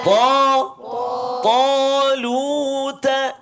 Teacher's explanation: Beza dia ta, dia ada isti'la, terangkat pangkal lidah kita kan.